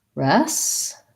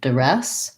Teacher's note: And the first DU can be a schwa, like res. And then we have red tent vowel there, duress.